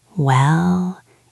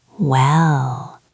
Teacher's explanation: it goes up a little bit at the end. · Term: thinking noise